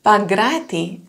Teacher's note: So there is a small N and a very voiced G, Pagrati.